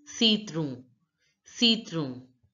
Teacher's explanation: ON is pronounced as O in French, the nasal sound O. So it becomes citron, citron.